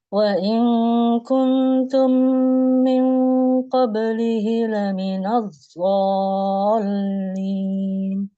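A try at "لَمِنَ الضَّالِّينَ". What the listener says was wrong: Laminad lagi masih. Bukan, botnya itu masih kurang pas. Coba sekali lagi laminad bol. Dia nggak di tepi Mbak, jangan ke ujung. Nah, jangan ke depan, tapi ke samping. Laminad bo ke sini, ke samping dia.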